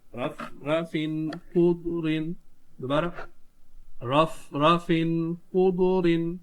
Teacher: رف خضر، دوبارہ رف خضر، یہاں تنوین کے بعد حرف حلقی ہے تو یہاں پر اظہار ہوگا، گنہ کر کے نہیں پڑھیں گے